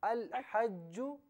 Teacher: ال میں جو لام ہے نا اس لام کو بالکل ساکن پڑھیں